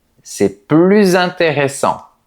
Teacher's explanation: Et devant une voyelle, on doit faire la liaison. Par exemple, c'est plus intéressant. On entend le son Z.